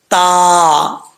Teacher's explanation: تلاہا، اب یہاں پر تا جو ہے یہ بریک پڑھا جائے گا، اس کا مخرج ہے زبان کی نوک اوپر والے دانتوں کی جڑوں سے لگے تو تا پڑھا جاتا ہے بریک، تا، ٹھیک ہے۔